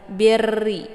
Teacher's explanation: Kemudian birri, karena di sini ada ra yang bertasydid, maka cara baca ba-nya ditekan sedikit, birri. Dan ra ini adalah sifatnya takrir, jadi ada getarannya